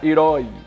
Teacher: O I quase não sai. Herói. O I sai fraco. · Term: semivogal